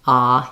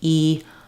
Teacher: my mouth is open when I say A and it's not as open when I say e